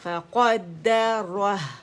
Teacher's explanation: را موٹا ہا باریک